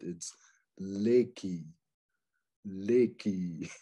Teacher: The Japanese don't really have an R sound like we do in our Western European languages, but it's more like an L. The tongue actually goes up, touches the palate. It's Reiki, Reiki, okay?